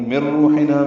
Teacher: نون ساکن کے بعد را آنے کی وجہ سے ادغام کامل ہے ، من روحنا، را پر پڑھیں گے، روح و مدہ ہے،